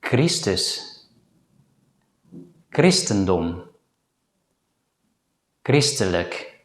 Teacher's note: In some words, the letter combination ch is pronounced as a voiceless consonant k without aspiration.